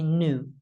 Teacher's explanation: in the United States, it's quite common to not have the y there.